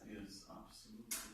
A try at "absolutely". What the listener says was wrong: I'm afraid this is not correct. I would say that the main stress comes on the third syllable. Absolutely. Absolutely. If this word works on its own, the main stress comes on the third syllable.